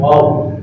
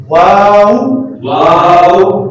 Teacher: ठीक है, हम वाव पढ़ते हैं, दांतों को यहाँ लगा लेते हैं, वाव, ये गलत है। वाव में होंठ गोल होते हैं